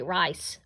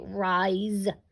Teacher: that S is kind of disguising itself a little bit as a Z, because we don't say rice, we say rise.